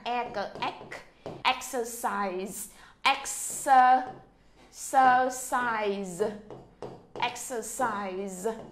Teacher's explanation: Chúng ta sẽ nhấn ở chỗ chữ ek.